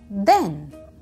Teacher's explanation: the other sound is the, which is called the voiced th, as in then